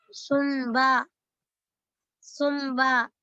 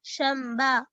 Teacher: नून गुन्ना से मीम की आवाज निकलती है।